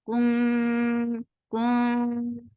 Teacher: And we already learned how to say the Ikhfa with Ta. You keep the tongue straight because Ta is among light letters, so Ikhfa will be light.